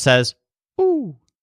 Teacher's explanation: this owl doesn't pronounce the H so it just says o